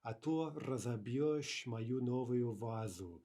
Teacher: note that rather unusual mobile vowel that's being brought in here to break up the z, b consonant cluster